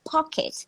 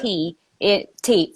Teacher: when they say P or T sounds, they really breathe out